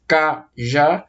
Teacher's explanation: uma palavra que eu divido em 2 sílabas, cajá. E a sílaba mais forte é a última. Se a sílaba mais forte de uma palavra é a última sílaba, nós chamamos elas de oxítona.